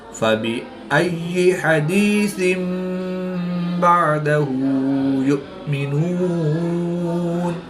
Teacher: دو زیر کی تنوین کے بعد حرف با ہے تو یہاں پر اقلاب ہوگا. تنوین کو میم سے بدل کر گننا زمانی کر کے پڑھیں گے.